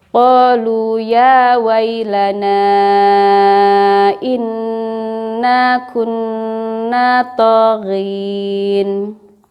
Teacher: Jadi ada nun bertasydid harus ditahan-tahan ya. Ada tanda bendera berarti harus lebih dari 2 harokat.